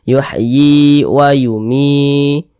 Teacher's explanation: Sebelum ya sukun ada huruf yang memiliki harokat kasroh. Maka huruf yang memiliki harokat kasroh ini dibaca panjang, sehingganya mi dibaca panjang